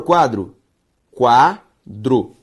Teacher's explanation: A sílaba tônica de quadro é quá.